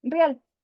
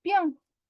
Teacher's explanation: Pero en el habla espontánea del todo el país, Venezuela, se frecuenta la diptongación, sinéresis, de la secuencia vocálica EA, que en vez de decir real, lo dicen real.